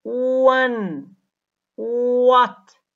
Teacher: With regards to voice, wa is voiced because the vocal cords are vibrating when it is produced. With regard to the place of articulation, wa is labiovelar because when it is produced, the lips are rounded and the back of the tongue is raised up in the mouth, almost touching the soft palate, the velum.